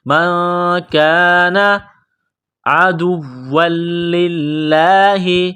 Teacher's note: واو کو دبانا ہے، سختی کرنی ہے. واو کو لام کے ساتھ ملائیں گے، لام کو دبائیں گے. عدوا للہ، لفظ اللہ کے نام سے پہلے زیر ہے تو لفظ اللہ کے نام کو باریک کرنا ہے.